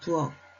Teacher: 키읔은 기역으로 소리가 납니다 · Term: 음절의 끝소리 규칙